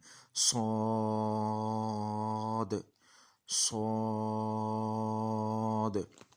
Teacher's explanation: तो ये सीटी के साथ मोटा करके और ये लंबा करके हमने अदा करना है